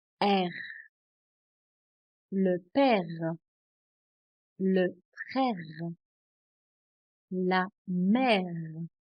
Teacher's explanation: R is pronounced at the back of the throat in French.